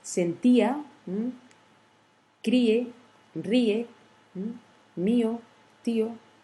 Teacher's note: la combinaison d'une voyelle faible tonique plus une voyelle forte ou d'une voyelle forte plus une voyelle faible tonique. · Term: hiatus